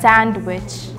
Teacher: We have a very strong D pronunciation like sand. You have a very long a.